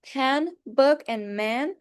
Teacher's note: my lips touch each other while saying those words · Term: bilabial